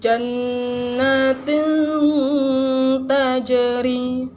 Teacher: ini maka hukum bacaannya ikhfa cara membacanya ialah dengan di dengungkan didengungkan dua harakat bacaan nun mati nya disamarkan dan didengungkan